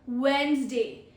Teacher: We do not pronounce the D in it.